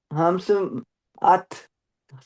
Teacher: ہمس کیا ہوتا ہے؟ ہمس ات، سانس تھوڑی سی نکلے، ہوا آپ کی نکلے. تا کے ساتھ ہا کی آواز بھی نکلے گی. ہاں ات، ایسے اس کو کہیں گے ہمس.